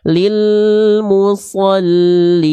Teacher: Jadi huruf lam sukun jangan sampai dilafalkan dengan memantulkan suara. Ya. Oke, jadi nggak dibaca memantulkan.